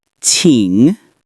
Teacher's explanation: It's a third tone, so your voice dips and rises.